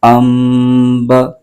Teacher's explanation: نون ساکن کو میم سے بدل کر اخفا کریں گے یعنی غنہ کے ساتھ پڑھیں گے ۔ با پر زبر ہے اس کو بغیر کھینچے پڑھیں گے،